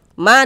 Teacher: Mad thobi'i panjang dua harakat